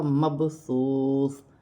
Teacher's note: واو ساکن سے پہلے پیش ہے تو واو مدہ بنے گی، ایک الف کی مقدار کھینچ کر پڑھا جائے گا · سا نرمی والا حرف ہے، اس کو ادا کرتے وقت سیٹی نہیں ہونی چاہیے